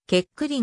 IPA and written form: keˈklɛ̃ (Kéklin)